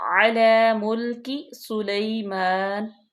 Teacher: عین کا مخرج واضح کریں لام کھڑے زبر لا لمبا کریں